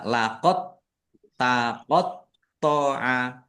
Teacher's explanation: Dalnya tidak dikolkolahkan. Tidak dikolkolahkan, langsung masuk ke huruf ta. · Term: idgham mutaqarribain